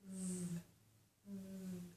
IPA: v